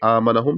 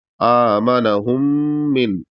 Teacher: یہاں پر بھی غنہ ہوگا کیونکہ یہاں پر بھی میم مشدد ہے تو یہاں غنہ کریں گے